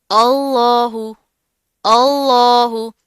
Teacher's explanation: جلالہ سے پہلے زبر آ رہی ہے، تو ہم لفظ اللہ کو موٹا پڑھیں گے، ٹھیک ہے، بھر کر پڑھیں گے.